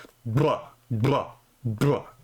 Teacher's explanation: Now bilabial just means using both your lips, right? So a bilabial trill is basically a rolled b like a br that sound right there. · That would be a bilabial trill. I labialize it a little bit. So there's kind of like a w sound at the end of it.